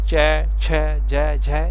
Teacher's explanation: स्पर्श के साथ साथ संघर्ष करना पड़ता है उस उच्चारण में, तब यानी जोर लगाना पड़ता है, तब उसको रगड़क खाते हुए बाहर निकलती है, तो उसको स्पर्श संघर्षी व्यंजन कहते हैं।